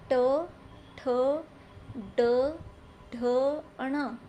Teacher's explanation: जो जीभ का आगे वाला भाग है वह ऊपर टच हो रहा है। · जो जीभ का आगे वाला भाग है वो ऊपर टच हो रहा है, तो जहाँ पर वो ऊपर टच हो रहा है उसको मूर्धा बोलते हैं, मूर्धा। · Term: मूर्धन्य वर्ण